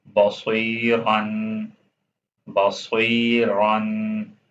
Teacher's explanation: صاد موٹا پڑھا جاتا ہے سین کو ہیوی نہیں پڑھا جاتا سین لائٹ ہوتا ہے باریک پڑھنا ہوتا ہے بصوی یہاں پر صاد آ گیا تو